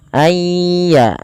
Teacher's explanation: Tidak dibaca ayyunazzala tapi ayya sambil dimasukkan ke rongga hidung. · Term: idgham bi gunnah